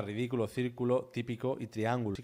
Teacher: triángulo no rima porque se acentúa en la a y las demás están acentuando en la i